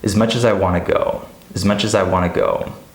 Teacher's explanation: here we have a final consonant cluster, the CH, and then we have a beginning vowel sound. So we're gonna connect them, we're gonna link them. · You have linking and you have this reduced speech of as becoming is